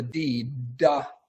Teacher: the difference is the D sound you're holding on to you you actually vibrate your vocal cords before you release the air before the stop is taken away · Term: voice stop consonant